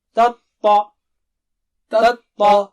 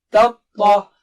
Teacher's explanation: تطلع تا باریک ہے اور طا موٹا اونچا ہے